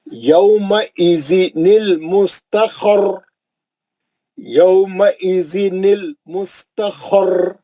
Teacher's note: را کو تکرار کرنا، کیوں تشدید ہے، دوہرا ہے. مستقر، خوف بھی موٹا ہے، را بھی موٹا ہے.